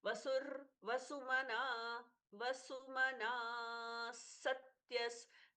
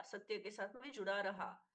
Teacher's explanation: सत्यस ना दीर्घ है इसलिए विसर्ग का स एकदम सौम्य हो गया